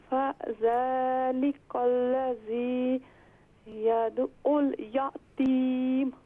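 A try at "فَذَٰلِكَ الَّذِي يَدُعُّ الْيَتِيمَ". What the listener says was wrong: दोबारा पढ़ें। फ़ज़ालिकल्लज़ी, आप सकता ना करें, रुक रुक कर मत पढ़ें। फ़ज़ालिकल्लज़ी नहीं, फ़ज़ालिकल्लज़ी।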